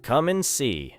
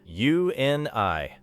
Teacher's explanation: in natural conversation and is often reduced to a short N sound.